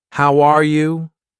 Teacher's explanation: my voice goes up at the end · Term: Intonation